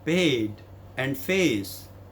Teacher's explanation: the first one is a is middle front to upper front diphthong